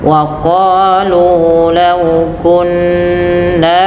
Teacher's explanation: Apabila kita mendapati di situ wa gunna dan gunnahkan, maksudnya dengan dibaca dengan gunnah pada bunyi nun dan mim yang bertasydid. Cara membacanya, ditahan bunyi suara nunnya, jangan hanya sekedar membaca tasydidnya.